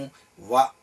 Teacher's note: అలాగే దంత్యోష్టము ఉన్నది. దంతము ఓష్ఠము ఇవి రెండు ఉత్పత్తి స్థానంగా కలిగినటువంటి అక్షరము వ అనేటువంటి అక్షరం.